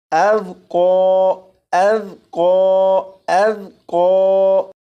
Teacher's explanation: ذال کے اوپر جزم ہے، اس ذال پر کلکلا نہیں کریں گے، یعنی اسے اس طرح سے نہیں پڑھیں گے اذ اذ اذ نہیں، بلکہ اذ اذ اذ۔